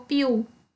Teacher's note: fez aí a omissão do Rzinho, olha, de priu, tá? Ficou piu, próprio. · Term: omissão de fonemas